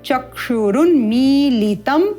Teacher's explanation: म में ई का दीर्घ स्वर है तो जहां दीर्घ स्वर है वहां पर दीर्घ अवधि